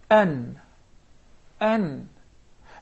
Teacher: Again, An-Nun, and would like to take a look at its articulation point. It comes basically from the tip of the tongue and what lies opposite to it from the gum of the two front top incisors